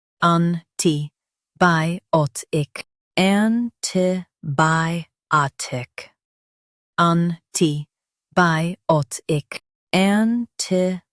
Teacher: Stress by and keep tick light.